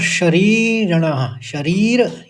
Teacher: शरीर ये दीर्घ पढ़ा जाएगा और ऋण ये ह्रस्व पढ़ा जाएगा